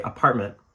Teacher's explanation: it's the closure of the glottis actually forms that T sound versus us actually saying the letter T and making that sound. So when it comes to a glottal stop, let's say the word apartment ends in a T, I'm more likely, I know that off the cuff, I say apartment. · the glottal stop kind of helps us form that T sound without actually having to say it